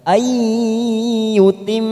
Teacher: mim yang bertasdid bacaan gunnah, kita tekan selama 3 ketuk sambil kita manfaatkan untuk membuat cengkok sesuai lagu kita masing-masing.